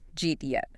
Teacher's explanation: Four distinct words, did you eat yet, transforms completely into two syllables, jeet yet. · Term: lazy English assimilation